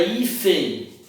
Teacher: A palavra hífen, também da mesma forma, termina em N, a sílaba forte ou tônica é I